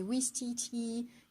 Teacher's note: you have such a long I sound that it makes you look like you're smiling even if you're grumpy.